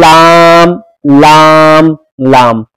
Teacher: इसका मखरज है जबान का किनारा एक वाहिद से लेकर दूसरे वाहिद तक ऊपर के दांतों के मसूड़े